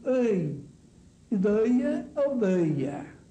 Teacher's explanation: A segunda é relacionada com dois timbres que em português já não existem, em português de Portugal. Portugal não distingue ideia de aldeia. Em ambos os casos, a pronúncia é um ei